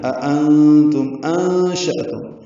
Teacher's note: اب یہاں پہ انشأتم ہے، أأنتم أنشأتم، دو حمزہ اکٹھے ہیں، حمزہ اقصی حلق سے ادا کریں گے بالجہر ، پہلے حمزہ کو دوسرے حمزہ کو تسہیل سے پڑھیں گے،